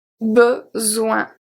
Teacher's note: the S make a Z sound, and O-I-N make the sound ouin, ouin, ouin.